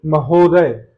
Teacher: हो पे बल जा रहा है